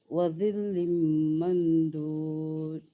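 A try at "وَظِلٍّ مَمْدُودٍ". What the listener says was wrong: Saya tengok macam lidah tu macam terkeluar. Dia ada salah. Wa zil. Saya ternampak imbasan lidah tu. dapat sebut za ataupun dia masih terpengaruh dengan sifat zal atau zai. Za.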